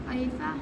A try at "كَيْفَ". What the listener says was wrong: قی نہیں کیف